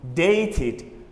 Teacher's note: The word date has got a T sound at the end. Therefore, we pronounce it as id. Dated. We add ed.